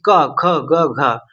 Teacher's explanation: अगर आप का ख ग घ को बोले और कंठ को पकड़े तो ये आपका कंपित करता हुआ नजर आएगा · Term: कंठ वर्ग